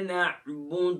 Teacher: اب نعبد میں عین کو ہم نے عین ہی پرناؤنس کرنا ہے، گلے کے مڈل سے ادا کرنا ہے.